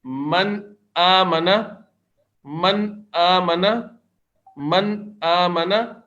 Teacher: जबान की जो नोक है जबान का जो सिरा है वह ऊपर के मसूड़ों पर लगेगा सामने के दांतों के ऊपर के मसूड़ों पर लगेगा लेकिन वहां ठहर नहीं उसको लगा के नहीं रखेंगे बस वहां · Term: इजहार